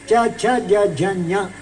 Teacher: ಚ ಬೇಕು ಅಂತ ಇದ್ರೆ ನಾಲಿಗೆ ಮಧ್ಯಭಾಗ ಬೇಕು